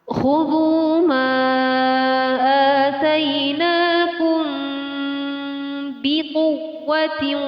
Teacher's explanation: Mim di sini dibaca dengan ikhfa, jadi dibaca samar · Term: ikhfa syafawi